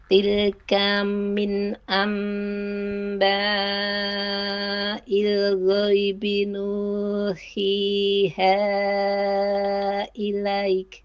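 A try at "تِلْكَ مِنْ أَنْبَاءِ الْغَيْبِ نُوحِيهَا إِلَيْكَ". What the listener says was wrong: Nah, di sini ilaik itu harusnya dibacanya minimal 2 harokat. Jadi ilaik ini kan namanya mad lin ya. Ada 3 pilihan kadar panjang, bisa boleh 2, 4 atau 6. Bukan ilaik begitu, tapi nuhiha ilaik. Minimal seperti itu.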